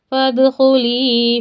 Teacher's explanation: دال پر ساکن ہے خلخلہ کریں